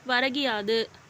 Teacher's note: முதல் சொல்லின் இறுதியில் உள்ள கூ என்ற எழுத்து கி என்று ஒலிக்கிறது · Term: குற்றியல் இகரம்